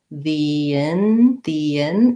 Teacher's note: this as one word the in the in and because i'm linking from an e to an i have a little bit of a glide there i don't have to say that in a really pronounced way